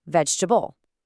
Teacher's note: we just kind of smooth things out by dropping a weak vowel sound